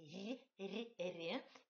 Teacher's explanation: Premier ri est palatalisé, c'est pas r